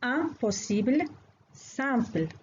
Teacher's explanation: هذه الحروف المركبة مخارجها تكون من الأنف باشتراك مع الفم، لذلك تسمى صوتيات أنفية